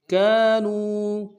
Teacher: کاف کے ساتھ الف مدہ ایک امتداد میں کھینچیں گے، نون کو واو کے ساتھ ملانا ہے، واو مدہ کے اوپر چھوٹا سا مد ہے، کم سے کم 2 الف امتداد میں کھینچیں گے۔